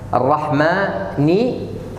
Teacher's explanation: Mim fathah habis mim ada alif. Kita baca panjang man.